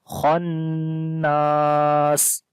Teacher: خا کو موٹا پڑھیں گے کیونکہ حروف استعلا میں سے ہے اور نون کے اوپر شد ہے، غنہ کریں گے اور لمبا بی کریں گے.